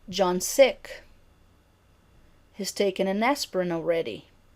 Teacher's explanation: In falling intonation, there is a jump up in pitch on the prominent syllable and then a drop in pitch after the prominent syllable to the end of the thought group